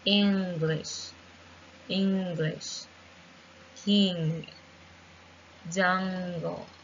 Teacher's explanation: And the third sound is the is a nasal, and it's a better because we use the back of the tongue making contact with the soft palate to produce it. To make it correctly, it's important to pass the air through the nose.